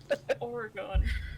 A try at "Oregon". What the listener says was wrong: Stop saying it's Oregon. It's Oregon. There's like an extra little syllable in there. Oregon. Oregon.